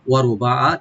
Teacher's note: ওয়া ওপেন রাখবেন, রটাকে একটু ডিপ করবো আমরা, বা ওপেন রেখে একালিফ টানবো, আর আইনে কোনো টান নাই। ওয়ারুবা, আইনটাকে অবশ্যই একটু রাইট দিবেন যেন আইনের মতো হয়, হামজার মতো না হয়।